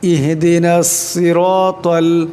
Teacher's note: সাদের আওয়াজটা মোটা করিয়ে পড়তে হবে